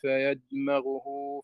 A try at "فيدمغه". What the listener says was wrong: فيدمغه ضم الغين. فيدمغه